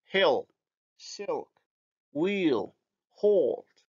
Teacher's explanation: the dark L is post-alveolar, or let's say palatal-alveolar